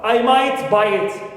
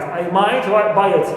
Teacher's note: might is my tonic syllable